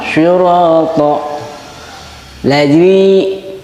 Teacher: Syura sebelum alif berharokat patah. Ini 2 ketukan. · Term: mad tabi'i